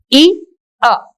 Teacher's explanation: sound e ah like that the meaning of this statement is in the beginning it is one sound e and it moves on it glides to another sound that is ah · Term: diphthong